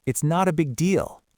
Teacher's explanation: We say it's not a big deal. The stress is at the end.